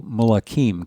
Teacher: The first vowel reduces to a vocal shawah. The second lengthens. Then we have that e ending.